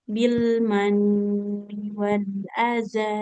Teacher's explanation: bil mani nunnya kasrah, di depannya tidak ada huruf ya, maka nggak boleh panjang